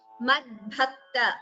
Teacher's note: Madbhakta, bha is mahaprana.